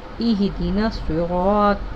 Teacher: یہاں پر صاد کو سین کی طرح نہیں پڑھنا، یہاں پر صاد پر پڑھنا ہے